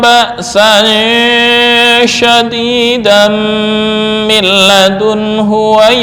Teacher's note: tanwin bertemu dengan mim. Nah, ini yang efek atau pengaruh gunnahnya masih ada, walaupun tanwin ini asalnya adalah nun sukun.